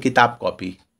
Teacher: उसी प्रकार देखिए किताब कॉपी, तो किताब जो ये ब है ना वो आधे प में कन्वर्ट हो जाएगा